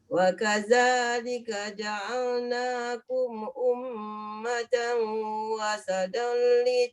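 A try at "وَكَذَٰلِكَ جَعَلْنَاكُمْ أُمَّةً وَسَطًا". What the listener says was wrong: wasatol. Jangan wasatal dia terbalik. Wasatol. Sini paste kau tebal. Bukan wasatal. Wasatol. Sin.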